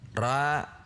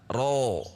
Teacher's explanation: ro tebal namun tidak dengan membulatkan bibir, dilakukan dengan menegangkan pangkal lidah. Perhatikan ra, ro, ra tipis, ro tebal.